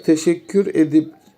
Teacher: Teşekkür etmek olduğuna göre burada T harfi D'ye dönüşmüştür. T'nin D'ye dönüşmesi yumuşamadır. T serttir, D yumuşaktır çünkü. Sertten yumuşağa doğru bir dönüşüm var. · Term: ünsüz yumuşaması